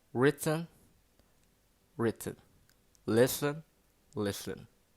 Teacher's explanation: the consonant N is pronounced as a syllable